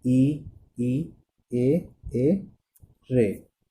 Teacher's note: जिन स्वरों के उच्चारण में जीभ का अगला वाला भाग काम आता है, ठीक है, उसे हम अग्र स्वर कहते हैं